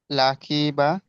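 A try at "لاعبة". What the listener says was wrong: লাখি নয়, লামের পরে কি আছে অক্ষরটা দেখেন? আইন জেরি।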